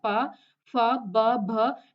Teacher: ये सारे के सारे जितने भी पा वर्ग में होंगे वो सारे के सारे व्यंजन औष्ठ्य होंगे, यानी होठों का इस्तेमाल आप इनको उच्चारित करते हुए करते हैं